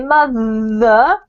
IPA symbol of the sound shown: ð